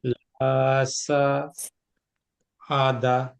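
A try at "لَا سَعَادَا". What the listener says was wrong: হুম, লা সাআদা।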